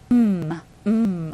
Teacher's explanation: so here is invited here it's right here vibrates you know because air coming out of your nose so M is nasal